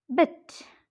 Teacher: the hinder part of the front of the tongue is raised to a position just above half close.